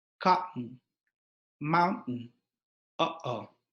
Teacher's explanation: The glottal stop is the sound that we produce when we pronounce the consonant T in words like cotton and mountain, or between and o in the expression uh-oh.